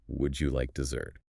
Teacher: the stress comes at the end of the word dessert.